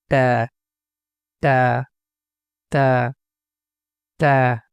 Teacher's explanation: এই হরফের উচ্চারণ হবে জিহ্বার আগা সামনের দাঁতের দিকে লাগাইয়া এই উচ্চারণ করতে হবে